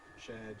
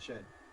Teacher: Shared and shed then become a length-only minimal pair.